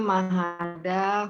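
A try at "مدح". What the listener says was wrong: jangan dibalik. Ya, madaha ya, bukan mahada.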